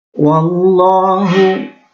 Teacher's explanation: lafadz Allah tafkhim atau lam jalalah tafkhim, karena ada lafadz Allah yang didahului harokat fathah